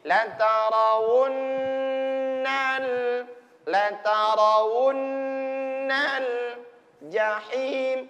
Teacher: Tahan, ditekan. Gunnahnya berlaku di nun tasdidnya.